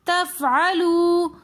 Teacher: تفعلوا کے اندر واو ساکن اس سے پہلے پیش آ رہا ہے تو واو مدہ ہونے کی وجہ سے ہم یہاں پر کھینچ کر پڑھیں گے